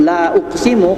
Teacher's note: praktikkan ee lafaz mad ee jaiz munfasil dengan empat harakat yaitu dengan dua ayunan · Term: mad jaiz munfasil